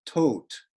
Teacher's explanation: tot in Old High German, the final D properly pronounced like a T